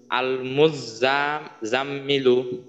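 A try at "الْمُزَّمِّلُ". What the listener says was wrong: আচ্ছা এইখানে কিন্তু ওয়াজিব গুন্না করতে হবে, আল মুজাম্মিলু, আল মুজাম্মিলু।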